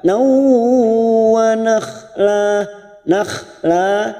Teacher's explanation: Siap masuk dan mendengung dan ditahan selama 3 harokat. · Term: idgham bigunah